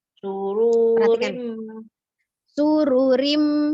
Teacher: Ru-nya tidak panjang, pendek ya, cuma doma biasa, tidak ada waw sukun sesudahnya. Jadi ru-nya dibaca pendek. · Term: ru-nya pendek